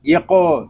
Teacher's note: قاف حروف مستعلیہ میں سے ہے، اس کو پر پڑھیں گے